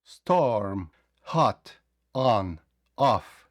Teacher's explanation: можемо тут вимовити Storm як о але найкраще для точнішої вимови вам потрібно просто опустити нижню щелепу не складувати губи на о